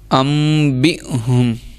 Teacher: حمزہ پہ جزم آ رہی تھی اس لیے ہم نے جھٹکا دیا ہے